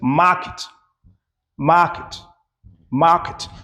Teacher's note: the stress in this word is on the first syllable.